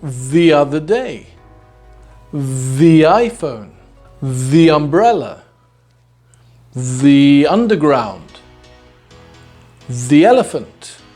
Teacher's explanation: so what we do is we transform the word THE into 'THEE'